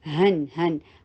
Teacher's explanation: ہا کو ادنا اقصی حلق سے ادا کیجیے ، نون کے اوپر 2 حرکہ غنہ کیجیے، ہن، نا کو